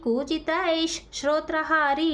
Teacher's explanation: ಬರ್ಕೊಳ್ಳಿ ಪೀತಚಂದ್ರರ್ಕರಶ್ಮಿಹಿ ಅಲಿಶುಕಪಿಕರಾಜಿ ಕೂಜಿತೈಶ್ ಶರೋತ್ರಹಾರಿ ಇನ್ನ ಮುಂದೆ ನಮಗೆ ಶೋ ಇದೆ ಅದಕ್ಕ ಹಿಂದಿನ ವಿಸರ್ಗದ ಮುಂದೆ ಶೋ ಇರೋದರಿಂದ ಹಿಂದಿನ ವಿಸರ್ಗ ಏನಾಯ್ತು ಅರ್ಧಶ ಆಗಿ ಕನ್ವರ್ಟ್ ಆಯ್ತು